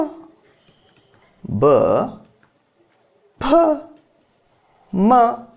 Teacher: ಯಾವುದು ಅಂದ್ರೆ ತುಟಿ ತುಟಿಗೆ ನಾವು ಏನಂತ ಕರೀತೀವಿ ಅಂದ್ರೆ ಓಷ್ಟ ಅಂತ ಕರೀತೀವಿ ಓಷ್ಟದ ಸಹಾಯದಿಂದ ಹುಟ್ಟಿದ ವರ್ಣಗಳನ್ನ ಓಷಟ್ಯಗಳೆಂದು ಕರೆಯುತ್ತೇವೆ